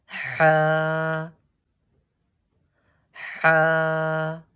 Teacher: It is read from the bottom of the throat.